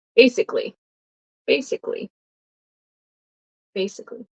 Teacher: we usually don't pronounce the a